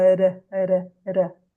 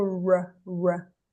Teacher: Daí é o R aqui na ponta da língua.